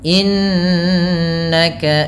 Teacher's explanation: ada Nun yang berharakat tasdid ini ditahan dengan bacaannya dua harakat dengan menahan bunyi nnya yang kita kenal dengan istilah yaitu gunnah gunah terdapat pada dua